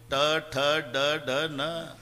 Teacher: वरच्या टाळूला जेभेचा स्पर्श आहे